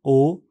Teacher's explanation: स्वर ओ, इस स्वर के उच्चारण में स्वर यंत्र कंपन करता है और मुलायम तालु ऊपर उठकर नासिक मार्ग को बंद कर देता है। होंठ गोल हो जाते हैं और जीभ का पिछला भाग मुलायम तालु की ओर उठता है। इस स्वर की अवधि अपेक्षाकृत लंबी होती है।